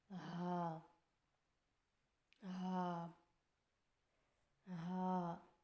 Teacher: زبان کی جڑ کو حلق کی طرف دبائے بغیر باریک اور بغیر رگڑ کھاتے سانس میں پڑھیں